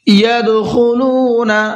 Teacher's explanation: دال میں قلقلہ کریں گے اور خا کو پر کر کے پڑھیں گے